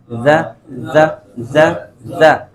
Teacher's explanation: ہلکی سی بنبناہٹ ہونی ہے